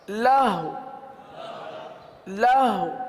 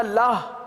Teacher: آخر میں واو ہے، ہونٹوں کو گول کر کے پڑھیں گے.